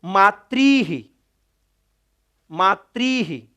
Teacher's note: विसर्ग का उच्चारण स्थान मूर्धा